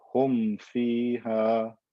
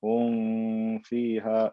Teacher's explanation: Every one of the remaining letters that are not ba and meme originate from places that are far away from the meme, and as such I can pronounce the meme clearly without any need for additional nasalization, any additional ghunna. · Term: idhar shafwi